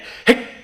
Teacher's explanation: So to check and see whether you're holding it in the back of your throat against what we call a closed glottis, simply say the word hic and hold the CK sound at the end.